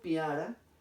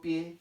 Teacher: Cuando digo piara, por ejemplo, en esta sílaba pia, que se pronuncian las dos vocales en una sílaba, ahí tendríamos un diptongo. Cuando digo pie, en esta sílaba se pronuncian las dos vocales.